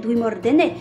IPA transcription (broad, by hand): dwimordɛnɛ